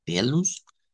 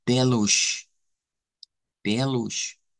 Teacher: Y pues para verlo en portugués europeo, la diferencia es la que en vez de sonar a S, suena a SH.